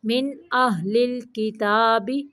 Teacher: من پہ نون کو صرف ظاہر کرنا ہے